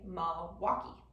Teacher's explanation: you didn't pronounce that L in the first syllable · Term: consonant deletion